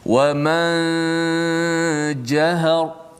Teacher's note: kita panjangkan gunnah, habis gunnah baru tekan jim. Mana kita letak nun tu di sisi, disembunyikan di sisi huruf jim.